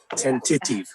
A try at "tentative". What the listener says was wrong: You're all wrong. You're all wrong. The stress is here. Tentative. Tentative. The stress is on the initial word.